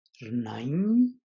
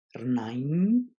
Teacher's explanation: the tone kind of falls and then goes up · the tone is going to be rising so it kind of falls and then rises